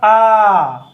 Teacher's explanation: आ को बोलने में हमारा मुख पूरा खुल गया, तो ये कहलाया विवृत।